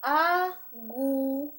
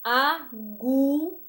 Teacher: então já observamos que o gu é a sílaba mais tônica então como ele é a penúltima sempre você vai avaliar a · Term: paroxítona